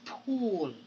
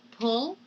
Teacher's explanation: when i speak of the tense and the laxiness of the vowels i am referring to the length of the sound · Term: tense vowel